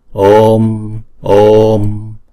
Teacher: chữ Om là chúng ta đọc hai nhịp chữ O nè. Om, Om. Đọc hai nhịp chữ O xong rồi mới đóng chữ O đó lại bằng một Anuswara.